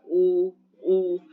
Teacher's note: आपका मुंह भी गोलाई जैसा हो रहा है। मुखा करते की कैसी हो रही है, गोलाई हो रही है।